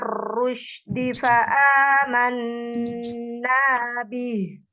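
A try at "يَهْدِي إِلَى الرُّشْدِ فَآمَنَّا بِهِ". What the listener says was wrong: Masih hamzah. Masih dipanjangkan. Nah, dipanjangkan hamzahnya. Hamzahnya. Tekan lagi hamzahnya. hamzah ini boleh jelas ya tadi, tapi itu tampil tadi. Itu tampil namanya, melebihkan atau isbah. Jadi hamzahnya itu tampil.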